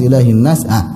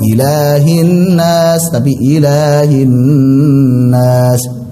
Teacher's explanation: Ila 2 harokat, hinnas lebih panjang dari mat tabi'i.